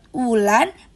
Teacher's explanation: Bunyi W diucapkan dengan bibir yang agak bundar dan udara keluar halus seperti vokal